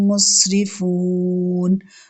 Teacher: مسرفون، سین اور را کو باریک پڑھنا ہے